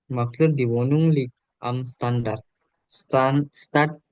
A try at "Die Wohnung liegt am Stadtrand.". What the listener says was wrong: Iya, Stadtrand.